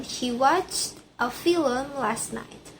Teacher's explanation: The speaker insert an extra vowel creating two syllables for film.